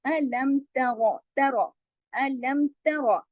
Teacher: इसमें रा मोटा भी पढ़ा जाएगा और सिर्फ एक हरकत पढ़ा जाएगा